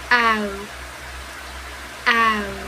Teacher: We move from this sound a to this sound a, We start in a more open position and then we finish in a closed position. Our lips are moving into a circle. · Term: diphthong ow